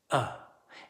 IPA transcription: ə